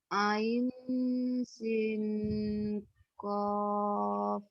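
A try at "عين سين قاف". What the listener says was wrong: bukan sin sa. Ain sa ko. Padahal yang dia baca yang pertama tuh udah bener. Itu bener yang pertama, Bu. dibaca sesuai huruf aslinya.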